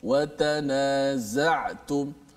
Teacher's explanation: So bunyi zai itu akan keluar di antara dua gigi kita. Hujung lidah mesti tekan. · Rapatkan, kemudian hujung lidah ini tekan di belakang gigi bawah, maka keluarlah daripadanya huruf zai